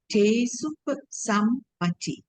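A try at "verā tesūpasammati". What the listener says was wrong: There's a long U. There are two U's, huh? This U and this U.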